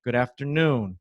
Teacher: A ênfase fica no noon.